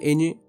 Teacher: lengua romances estas lenguas en ocasiones utilizaban un sonido muy particular este sonido se define como nasal con salida del aire por la nariz palatal la lengua se apoya contra el paladar duro y sonoro las cuerdas vocales vibran